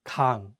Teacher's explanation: the ieung is at the end, so the word 강 ends with an ng sound